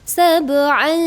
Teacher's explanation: Tanwin bertemu dengan shin itu disebut dengan ikhfa hakiki, harus didengungkan.